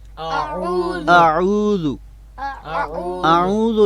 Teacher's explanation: اعوذ باللہ یہ غلط ہے. لہٰذا عین کا جو حرف ہے اس کو ہم نے غنہ کے ساتھ ہرگز نہیں پڑھنا.